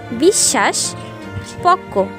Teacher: শব্দের মধ্যে বা শেষে যদি বফলা যুক্ত হয় সেক্ষেত্রে যুক্ত ব্যঞ্জনটির দ্বিত্ব উচ্চারণ হয়